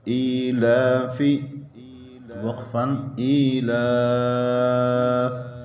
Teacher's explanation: کڑی حرکات کے بعد والا حرف وقف میں ساکن ہو رہا ہے، مد عارض وقفی ہوگی۔ مد عارض وقفی کا مطلب وقف میں 3 الف برابر کھینچ کر پڑھیں گے۔